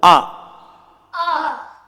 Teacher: இந்த அலிஃபுக்கு ஜபர் என்பதை அடித்தொண்டையிலிருந்து வெளியாகிறது. அதாவது தமிழில் அப்படின்னு சொல்கிற மாதிரி சொல்லக்கூடாது, கொஞ்சம் முக்குனாப்பில் என்பதாக சொல்ல வேண்டும்.